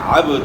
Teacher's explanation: با ساکن ہے اور با حروف قلقلہ میں سے ہے، تو با کے اندر آپ نے قلقلہ کرنا ہے،